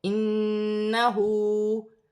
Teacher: نون مشدد میں غنہ ہوگا، ہا پر الٹی پیش ہے، ایک الف کی مقدار کھینچ کر پڑھا جائے گا